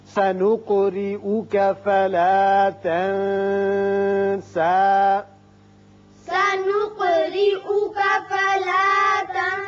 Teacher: قاف ساکن ہے، اس کی صفت قلقلہ ادا کریں، را کے نیچے زیر اس کو باریک پڑھیں گے۔